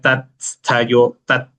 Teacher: See, for us it is easier to pronounce tastha, so we usually tell that, but it is tatistha. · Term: dvitva